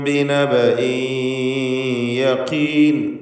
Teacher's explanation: ബിനബഇൻ എന്നിടത്ത് തൻവീനിനെ യായിലേക്ക് ലയിപ്പിക്കണം. ഇദ്ഗാം ബിഗുന്ന നാഖിസ് യായിലേക്ക് ഇദ്ഗാം ചെയ്ത് മണിച്ചുകൊണ്ട് ഉച്ചരിക്കുക.